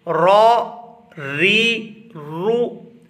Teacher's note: اگر را زبر کے ساتھ آئے گی تو پر ادا ہوگی، اگر را زیر کے ساتھ آئے گی تو باریک ادا ہوگی، اور اگر را پیش کے ساتھ آئے گی تب بھی پر ادا ہوگی۔